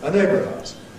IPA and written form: ə ˈneɪbrəv aʊəz (a neighbour of ours)